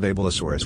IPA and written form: əˌbɛlɪˈsɔːrəs (Abelisaurus)